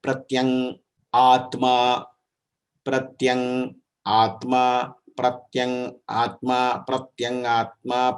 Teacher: It is a Anunasika. It has Anunasika sthana and it has a Kanta sthana also. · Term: Nakara